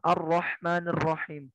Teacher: getarannya itu ya tidak terlalu nampak sebagaimana huruf r pada Indonesia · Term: taqrir